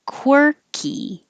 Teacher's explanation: you have to round your lips for the kw and then unround them for the er